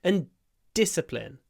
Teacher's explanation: Stress is on the di at the beginning, so we do this discipline, where we don't release the d immediately